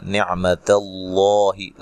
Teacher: لفظ اللہ کو موٹا ادا کرنا، اس سے پہلے حرف پر زبر ہے۔